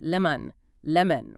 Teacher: We strike the first part with our vocal hammer, N-E. Because the E takes the energy, the O at the end of the word is abandoned. It loses its clear O shape. It collapses into a schwa.